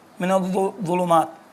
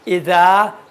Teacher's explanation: اذا اور ضین میں فرق یہ ہے کہ ضین موٹا پڑھا جاتا ہے، اذا تھوڑا سا ہلکا پڑھا جاتا ہے